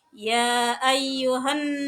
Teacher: bacaan gunah mendengung dibaca Dua harkat